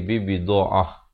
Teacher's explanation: Ta marbutah ini ditukarkan kepada bunyi ha, kemudian saya tidak balik pada wajibna.